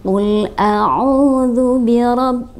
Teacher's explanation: tidak sempurna karena di sana lu nah nya tidak ditahan anak ketika kita menemukan ada Nun bertasydid maka selain didengungkan maka juga harus ditahan